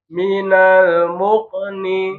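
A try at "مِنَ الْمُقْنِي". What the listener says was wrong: Mukoni, mukoni. Bukan muke, muko. Minal muko, mukoni, bukan muke nih, mukoni. Muko.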